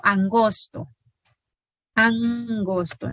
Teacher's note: se mantiene oclusiva porque está en contacto con esta n nasal